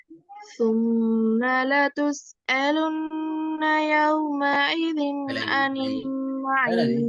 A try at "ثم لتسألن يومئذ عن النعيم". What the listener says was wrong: யௌம ஐதீன். அப்ப இது ஐனா வந்துக்குது. யௌம ஐதீன். எல்லாமே ஐந்து தான் போடுது. யௌம ஈதீன் தொண்டையிட்டு நல்லா முன்பகுதியில இருந்து சவுண்ட் எடுக்கணும்.